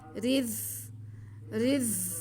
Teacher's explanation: را باریک پڑھتے ہوئے ہم زا کے ساتھ ملائیں گے۔ رز، رز، زا میں سیٹی کی آواز آئے گی۔